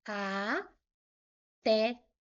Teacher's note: Porque ela é uma oxítona. Até o té é a sílaba forte. A última sílaba é a sílaba tônica.